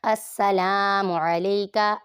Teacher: हमज़ा मुतहर्रिक सीन मुशद्दिद और मुतहर्रिक लाम के ऊपर अलिफ मद्दा और लंबा करेंगे